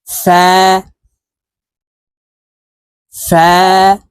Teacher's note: ফা হরফের উচ্চারণ উপরের দাঁত নিচের ঠোঁটের পেটের সঙ্গে লাগিয়ে এক আলিফটা নিয়ে উচ্চারণ করব